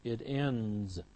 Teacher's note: It ends, d, again, voiced, followed by z